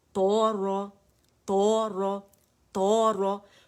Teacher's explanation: تو مزید موٹا ہے، رو جو ہے صرف موٹا ہے